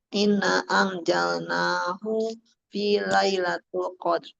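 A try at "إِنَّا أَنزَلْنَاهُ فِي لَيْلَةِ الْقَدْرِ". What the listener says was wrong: Tul atau til? Iya, terus ininya inanya panjang, jangan cepet-cepet. Angnya juga pelan dulu.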